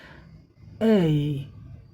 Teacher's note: Front टंग अप, ए, जिह्वा का front part ऊपर उठ जाएगा, जो कि यहाँ देखने को आपको मिल रहा है।